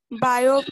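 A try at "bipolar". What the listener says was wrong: बायो नहीं होता, बाय होता है, बाइपोलर।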